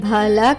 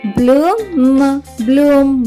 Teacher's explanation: బిఎల్ యొక్క శబ్దం బాలా కాకుండా బ్ల అవుతుంది, కాబట్టి బిఎల్ఓఎం యొక్క ఉచ్చారణ అవుతుంది బ్లూమ్.